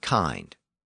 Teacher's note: Kin ended in a simple N sound, so it kept its short vowel. But kind ended in an ND sound, and that pulled the vowel and gave it the long I sound that it has today.